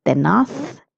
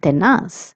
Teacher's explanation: The pronunciation of this word is tenath if you're in Spain and tenas if you're in Latin America. Zed has a sound of th or so.